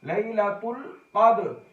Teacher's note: قاف موٹے حروف میں ہے، دال قلقلہ ہو رہا ہے